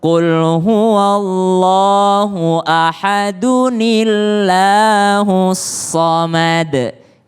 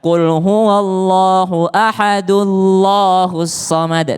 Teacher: Qul huwallahu ahadu dan nunnya terbaca berbaris kasrah atau bawah. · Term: nun kecil